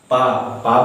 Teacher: ओष्ठ मतलब होठों पर दबाव पड़ता है, होठों पर स्पर्श होता है। जैसे कि पा बोलने से मेरे दोनों हाथ मिल रहे हैं, दोनों होठ स्पर्श हो रहा है।